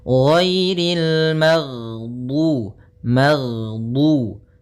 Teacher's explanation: Jahr yaitu tertahannya nafas kita. Jadi ketika melafalkan ghain, nafas kita tertahan, suara kita dialirkan.